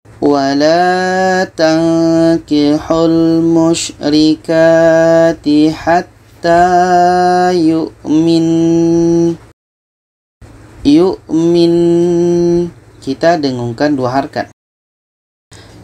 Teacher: ada Nun tasydid jadi kalau kita berhenti tetap kita dengungkan